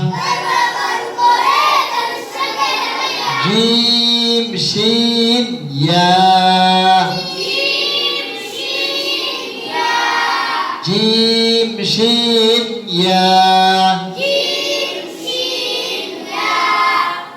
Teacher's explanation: 6 নম্বর মাখরাজ 6 নম্বর মাখরাজ জিব্বার মধ্যখান আর বরাবর উপরে তালুর সঙ্গে লাগাইয়া।